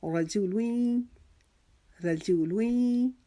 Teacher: جیم کی پیش کو جلدی سے ادا کریں گے. رجو, لام کے اوپر 2 پیش کی تنوین جو ہے وہ یا کی تشدید کے ساتھ مرج ہو رہی ہے, اور ہم اس کو حرف یرملون کا قاعدہ لگ رہا ہے.